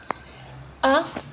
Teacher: La langue est abaissée au maximum, passage large.